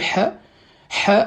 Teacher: c'est un son qui sort vraiment de fond de la gorge